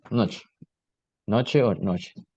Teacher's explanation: La voyelle O se prononce comme une voyelle arrondie arrière mi-fermée O, similaire à la prononciation du O dans le mot ocho, par exemple, et par exemple le mot noche, qui se prononce noche, noche o noche.